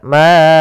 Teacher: Kita memanjangkan huruf ma sebanyak empat harakat. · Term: Mad jaiz munfasil